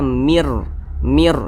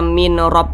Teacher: nun sukun berjumpa dengan huruf ro hukumnya adalah idgham bila ghunah cara bacanya itu dengan cara memasukkan kemudian juga tidak berdengung · ghunah cara bacanya itu dengan cara memasukkan kemudian juga tidak berdengung Nah maka yang dimasukkan itu bunyi Nun ini dimasukkan langsung ke huruf Ro